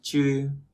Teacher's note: Chư này bật hơi. Bật hơi thì cảm giác cái âm nó bị mềm lên tí